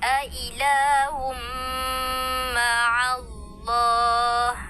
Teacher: Sekali lagi dengung dua harakat.